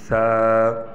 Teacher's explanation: जबान है अब यह जबान की नोक ऊपर के दांतों में ऊपर के दांत और नीचे के दांतों के दरमियान हल्की सी जबान आए